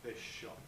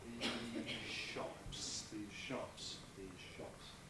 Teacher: The whole thing becomes palatal alveolar.